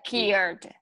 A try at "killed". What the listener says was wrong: When you say cared, your tongue isn't going out far enough to touch the back of your teeth. Touch the back of your teeth on those L's in killed. So it's The tongue has your tongue isn't touching. Your tongue isn't touching. Touch the back of your teeth at the ridge up here.